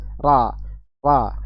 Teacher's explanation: huruf ro yang pertama fathah ro berharakat fathah tebal